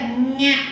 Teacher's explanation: இது வந்து ஞ அப்படிங்கும்போது மூக்க வந்து நல்லா ஞ அப்படின்னும் மூக்க அப்படி சுழிச்சு சொல்லணும்